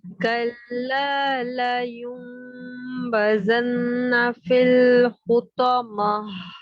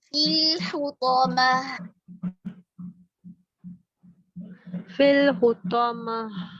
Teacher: फिल हुतमा कसरा को मारूफ करते हुए लाम से मिलाएं